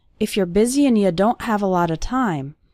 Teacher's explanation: That's very common for the word and to get reduced to just an n sound.